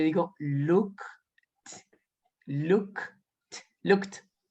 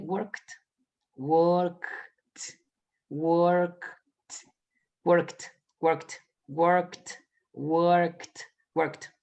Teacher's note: yo sé que como work termina en K, suena como una T